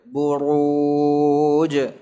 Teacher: jadi ra dhammah itu tebal